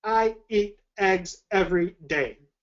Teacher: what we call hard glottal attacks a lot of times when we speak we kind of start speaking with a bit of a harsh to it